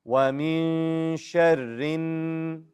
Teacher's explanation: Say it. Yes, go straight to the noon and hold that noon. It has a shadda. Noon with a shadda, you got to hold.